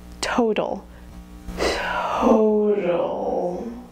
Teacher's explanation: Instead, it's going to be a little bit less of a, it would be something like this, total, total. You can just see my lips go in a little bit for that ooh at the end, but at the same time, you wouldn't hear the completely pure vowel. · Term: diphthong